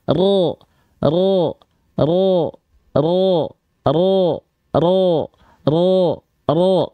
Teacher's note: Huruf tebal itu mengangkat pangkal lidah, dia berubah vokal A menjadi vokal O. · Kalau dia naik ke atas seperti ini punyanya huruf tebal. Huruf tebal ketika fathah bunyi vokalnya tidak A tapi condong kepada vokal O karena impact dari pangkal lidah yang naik. Nama sifatnya isti'la.